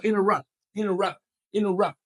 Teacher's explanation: it's there of course all the letters are there of course T is there but it's just not aspirated and thus it sounds like it's not there